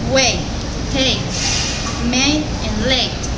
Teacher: this is a front vowel with a long sound